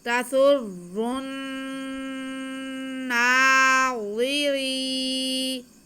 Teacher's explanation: را باریک پڑھا جائے گا کیونکہ را کے نیچے زیر ہے